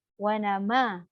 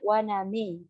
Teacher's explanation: Kalau kita katakan untuk fathah itu harus menjelaskan bunyi a di akhir, di ujungnya adalah a, bukan e